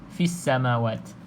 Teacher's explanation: Dalam ayat ni insya-Allah tidak ada banyak sangat yang perlu dikupaskan, iaitu kalau lam kosong macam biasa tadi kita sebut alif lam syamsiah, fis samawat tidak perlu lafazkan huruf lam, terus sahaja ke dalam huruf yang bersabdu dekat sini, huruf sin lah